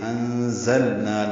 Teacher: انزلنا نون ساکن پہ زا آنے کی وجہ سے اخفا ہو رہا ہے، ذات سفید کی آواز سے ادا کریں گے. انزلنا لام ساکن پہ اظہار ہے، نا الف مدہ ہے، 2 حرکات لمبا کریں گے